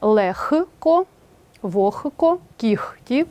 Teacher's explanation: у словах легко вогко кігті нігті дьохтю дзвінкий г переходить у глухий х тобто слова транскрибується Таким чином лехко вохко кіхті і вимовляються так